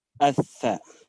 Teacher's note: طرف اللسان مع رؤوس الثنايا العليا